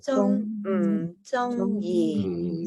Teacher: You go back up high, 中, and then land in the middle for yi.